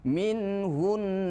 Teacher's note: kalau ada Nun musyadadah seperti ini di akhir kalimat maka ditahan dulu dua harakat · Dengungnya berapa ukurannya? Dengungnya adalah ukurannya 2 harokat. Tidak boleh lebih dan tidak boleh kurang. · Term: nun musyaddadah